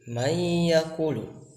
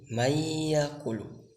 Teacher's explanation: Jadi nun di sana tidak dibaca tetapi dimasukkan ke huruf selanjutnya, seperti dalam mayyaqulu, artinya nun tidak dibaca tetapi langsung masukkan kepada huruf ya, yakni mayyaqulu. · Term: idgham